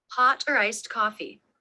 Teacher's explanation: Both hot and coffee have the ah vowel in American English.